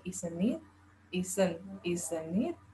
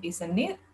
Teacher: Stressnya di awal, di akhirnya falling intonation untuk agreement. While for uncertainty atau ketidakyakinan, the end is raising.